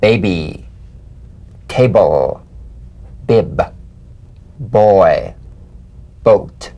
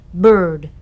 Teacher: Play this on the springing away from contact, not by pressing the lips together. You'll feel a gentle voiced pulsation on the lips like a delicate, crisp tap. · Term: drum beat B